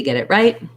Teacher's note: we link this t to the next vowel and it becomes a flap t sounds more like a d and sometimes i also change this t to more of a